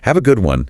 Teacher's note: they wrap up interactions smoothly, often with a slightly rising intonation at the end of good one